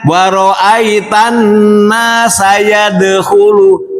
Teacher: Tidak mengkolkolahkan huruf dal.